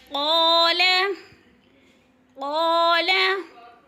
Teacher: قاف کو پر کر کے پڑھیں گے، موٹے حروف میں سے ہے۔ قا پہ الف مدہ ہو رہا ہے، قال تھوڑا سا کھینچ کر، یا جب یا کو ادا کرنا ہے تو سختی سے نہیں پڑھنا، شین کی آواز نہیں آنی چاہیے، یا کر کے ادا نہیں کرنا، یا یعنی نرم۔